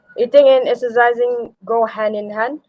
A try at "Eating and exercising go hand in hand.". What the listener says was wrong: Are you saying it with rising intonation as a question, asking me, or a statement? Eating and exercising go hand in hand.